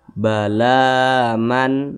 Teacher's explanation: lam di atas huruf lam ada Alif kecil berdiri di atasnya maka huruf lam dibaca panjang Mad Thobi'i panjangnya dua harakat atau kira-kira dua ketukan